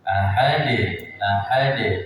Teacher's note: Di akhir itu ada da sukun qalqalah. Jadi dipantulkan.